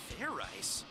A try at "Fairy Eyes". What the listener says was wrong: Idiot. It's pronounced Fair Eyes. There's no ice in it.